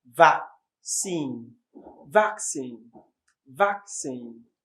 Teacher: It stresses on the first syllable.